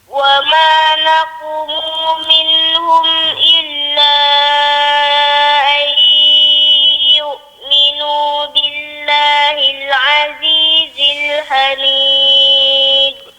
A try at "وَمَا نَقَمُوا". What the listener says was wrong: Pada ayat wa ma naqamu. Dia tadi tak jelas kat itu. Dengar macam naqumu. Macam naqumu tadi. Dia naqamu.